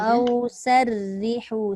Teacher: Ro yang berbaris bawah itu nipis.